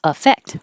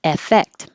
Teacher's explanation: These will sound so similar that we're not using a vowel for the A or the E. It's changing to the schwa because it's not stressed. So they will both sound like affect, which is why I think so many people make mistakes in spelling it.